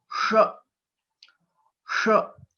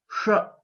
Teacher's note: this is a murdhanya letter, and we'll have to roll back our tongue. · You will be able to hear something like a whistling sound.